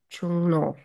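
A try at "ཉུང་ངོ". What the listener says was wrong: Not Chung.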